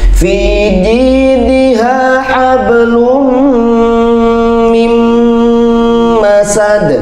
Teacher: Harus dibaca dengung, ditahan 3 harakat. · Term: idgham bi gunnah